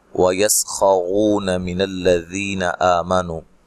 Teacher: سین کو باریک سیٹی سے ادا کرنا ہے، ہلانا نہیں ہے۔ خاک اور را کو موٹا ادا کرنا ہے، اور رو و مدہ ہے۔